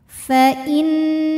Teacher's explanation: Kemudian ada hukum gunnah musyaddadah karena nunnya bertasydid, maka dibacanya dengung. Jadi ini bunyi N kita tahan.